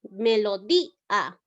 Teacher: La I vocal cerrada, la A vocal abierta. En este caso, la cerrada suena más.